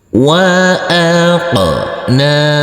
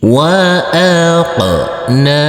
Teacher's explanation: Huruf qaf yang bersukun ini kita pantulkan karena ini adalah bacaan qalqalah. Dan huruf nun ini kita baca panjang dengan panjang 2 harokat karena di atasnya ada huruf alif kecil yang berdiri tegak lurus.